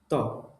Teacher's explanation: জিহ্বার আগের অংশটা হচ্ছে উপরের দাঁতের মাড়ির সাথে লেগে যাবে।